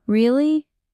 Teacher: Go up with really to show curiosity.